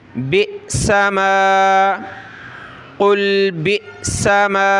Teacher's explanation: حمزہ ساکنہ کو پڑھتے وقت جھٹکا دینا ہوتا ہے. با حمزہ زیر بی، ٹھیک ہے، سین زبر سا، میم الف زبر ما.